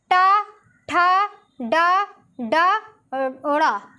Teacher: जीभ अपनी मसूड़ों के स्पर्श कर रही है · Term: मूर्धन्य